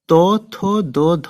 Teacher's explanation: এগুলো উচ্চারণ করলে কি হচ্ছে আমাদের জিহ্বা আমাদের জিহ্বা গিয়ে দাঁতে স্পর্শ করছে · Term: দন্ত ব্যঞ্জন